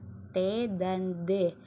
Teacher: bunyi yang terjadi dengan cara menempelkan ujung lidah ke gusi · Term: konsonan laminoal veolar